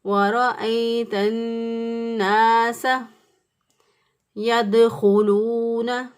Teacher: سین کی ادائیگی میں سیڑھی جیسی یا چڑیا جیسی آواز ضرور آنی چاہیے